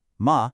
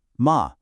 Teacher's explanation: If you use a high flat tone, ma, you are saying mother. But if you use a dipping tone, ma, you are saying horse.